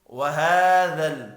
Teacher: ہا کے اوپر کھڑی زبر ہے، ایک الف کے برابر کھینچ کر پڑھیں گے۔